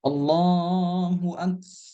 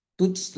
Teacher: Setiap huruf kaf dan huruf ta yang sukun itu dihameskan.